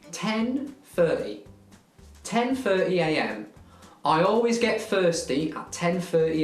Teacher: the th sound turns into an f